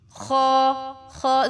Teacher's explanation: اور خا میں جو ہے اس کی ساؤنڈ تھوڑی سی اوپر کی جانب سے آ رہی ہے